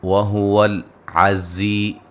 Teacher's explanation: زی یا مدہ ہے، زا کو سیٹی سے ادا کریں گے